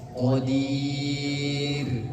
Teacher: Ro sebelumnya adalah huruf ya sukun. Maka dibacanya tipis qadir bukan qadir.